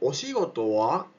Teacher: podemos hacer el tono ascendente pero con el wa